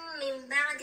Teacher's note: بعد از نون ساکن حرف با ذکر شده، اینجا اقلاب صورت میگیره، نون تبدیل به میم میشه